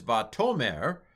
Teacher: this one is vatomer, and the accent is on the toe here